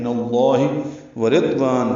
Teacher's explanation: را باریک ہے یہاں پہ، ضاد ساکن ہے اس پہ اظہار ہوگا.